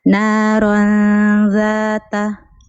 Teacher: Ra tanwin bil fathi mukhfah 'inda dzalil maftuha bi gunnah harakatain